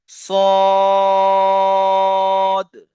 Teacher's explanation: সোয়াদ আলিফ জাবার সা হবে না, সোয়াদ আলিফ জাবার স। আর সোয়াদটি 3 আলিফ টান হরফ, একে 3 আলিফ টান দিয়ে পড়তে হবে।